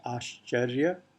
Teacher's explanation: sh and ch both are stridents, and yet they occur adjacently